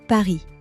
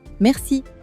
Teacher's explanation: Think of gargling water. That vibration at the back of your throat, that is the French R.